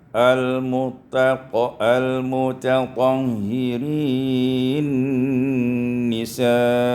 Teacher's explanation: Pada ayat 222 dan 223 ini diwasalkan al-mutatahhirina nisa'ukum. Idgham nun fil nun, diidghamkan nun pada nun sehingga kita baca al-mutatahhirin nisa'ukum.